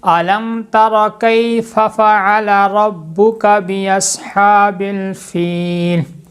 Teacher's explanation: کیا مطلب اظہار شفوی کا، کہ میم کی آواز کو ظاہر کر کے پڑھنا ہے، ناک میں چھپانا نہیں ہے، غنہ نہیں کرنا